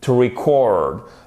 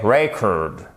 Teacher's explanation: Le E se prononce comme un I court et on a l'accentuation sur la seconde syllabe.